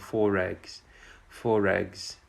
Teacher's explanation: the first one ends with an r and the next one begins with a vowel we actually link them together